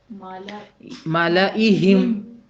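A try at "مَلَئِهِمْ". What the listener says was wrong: ملائہم. یہ ہے جو ہے اس کو آپ نے بھاری کر کے ادا کرنا تھا, تو کیا ہوگا؟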